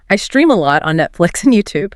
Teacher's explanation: stressing lot and Netflix in I stream a lot on Netflix and YouTube to emphasize how often and where you watch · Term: sentence stress